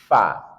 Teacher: perhatikan sifatnya hamas, maka kita alirkan udara atau nafas.